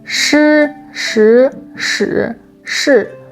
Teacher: For example, in Mandarin, shi, shi, shi, shi are pronounced with 4 very distinct tones: high-level flat, rising, falling rising, and falling